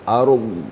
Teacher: wal ardh harus kedengaran di pangkal geraham kita, ardh gitu ya. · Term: dhad